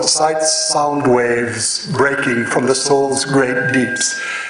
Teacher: you reach the k of breaking the waves break and then you have a kind of swirl of short syllables you have three short syllables and then you return to the tranquility of the soul ocean in the last three long again very long syllables